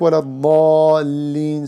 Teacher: 3, applying clear pronunciation to the heavy letters and the light letters when they are beside each other in one word or in between word, like wala dallin, so da is elevated, lam is lowered